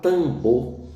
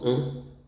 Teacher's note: Mas esse A também pode ser nasalizado na palavra tambor, que é representado graficamente com um T, um A e um M. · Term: nasalização